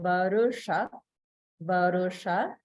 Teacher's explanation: there's Swara Bhakti because the Repa is followed by Sha · because Va and Ru are with the lower Swara, it goes down slightly